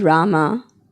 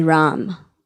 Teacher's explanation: in Hindi, the final vowel is often dropped. But Sanskrit, it's Rama.